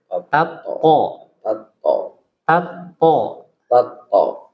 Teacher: jadi huruf tho itu enggak boleh keluar udara